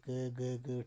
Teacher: इनके उच्चारण में फेफड़ों से बाहर निकलने वाली वायु की मात्रा कम होती है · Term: अल्प प्राण